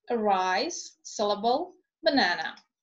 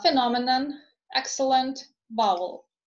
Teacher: the letter E is reduced to schwa, again, in unstressed syllables